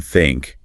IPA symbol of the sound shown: θ